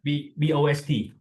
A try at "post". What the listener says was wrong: PB thing. It's that PB sound we were talking about.